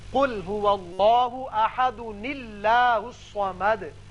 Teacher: ایک اور قاعدہ یاد رکھیے، جب آپ اس آیت کو اس آیت سے ملانا چاہیں، اب یہاں دال کے اوپر دو پیش تنوین ہے. اب تنوین کی وجہ سے یہ الف کی زبر گر جائے گی اور ایک چھوٹا نون پیدا ہوگا زیر کے ساتھ، تو اس کو ملانے کی صورت میں یوں پڑھیں گے قل هو اللہ احد اللہ الصمد.